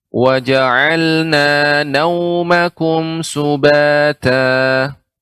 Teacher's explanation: ketika nau di sini waw sukun sehingga kita munyungkan bibir kita